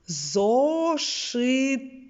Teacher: ми чуємо твердий звук т в кінці слова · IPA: [т]